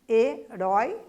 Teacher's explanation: Herói, rói é mais forte, é mais intenso, é uma oxítona.